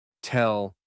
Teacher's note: el sonido que tú percibes como una L en tell es prácticamente una W.